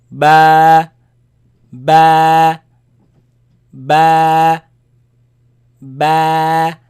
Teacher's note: So you see the letter, this letter, the sound is b, comes from the lips. B. It is elongated, it is stretched because of the alif following it.